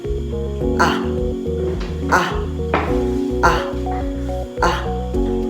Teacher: At ang letrang A naman ay binibigkas sa sentral na mababa.